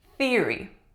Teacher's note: theory voiceless th at the beginning